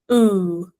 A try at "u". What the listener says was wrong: No, you got down there again. I knew, make it posh. You're higher up, you're here, but you're not there yet.